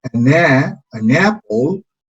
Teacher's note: Apple empieza con una vocal, apple. Entonces esta N vamos a liarla con A.